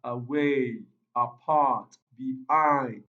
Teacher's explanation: the primary stress on the second syllable, not on the first syllable.